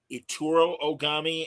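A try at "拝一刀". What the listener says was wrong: Itu, no R. Itu Ogami and Daigoro Ogami.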